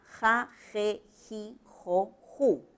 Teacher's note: fricativo velar sordo que es la x que ustedes ven ahí es un símbolo nada más se representa para sílabas que van